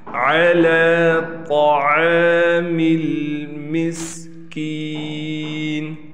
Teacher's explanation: لام پر کڑا زبر ہونے کی وجہ سے لام کو کھینچیں گے